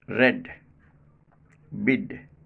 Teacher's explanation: in the end position tip of the tongue still remains in touch with the teeth ridge and not released immediately